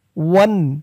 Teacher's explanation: স্পষ্ট করে গুন্নাহ ছাড়া বলতে হবে।